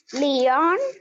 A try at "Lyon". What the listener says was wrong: not Lyon, N will be silent.